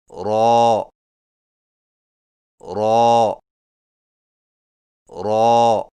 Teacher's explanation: را کی ادائیگی میں زبان کی نوک کی پشت کو اوپر والے دانتوں کے مسوڑوں سے لگا کر موٹی آواز میں پڑھیں